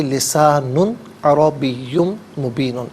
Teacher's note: لسان میں نون پر دو پیش کی تنوین ہے، یہاں پر آگے حرف حلقی عین آ رہا ہے تو یہاں غنہ نہیں کریں گے، اظہار کریں گے · یہاں غنہ نہیں کریں گے، اظہار کریں گے، لسان عربی مبین، عربی میں را پر زبر ہے، را کو پر کر کے پڑھا جائے گا